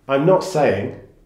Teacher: this phrase has a rising then falling intonation